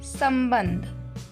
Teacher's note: उच्चारण में स के बाद आधा म और ब के बाद आधा न का उच्चारण सुनने को मिलता है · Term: अनुस्वर